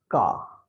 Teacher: the back sides of our palate and of our tongue, they touch each other, and the sound then comes ka sounds, right?